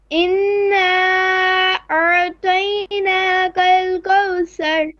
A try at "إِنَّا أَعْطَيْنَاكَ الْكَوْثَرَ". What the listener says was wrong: So here the ra is going to be heavy, full mouth. Thar, thar. So inna noon shadda to bis. Make your ayn clear. أعطيناك الكوثر.